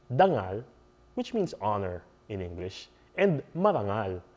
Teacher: when a d is between two vowels it becomes an R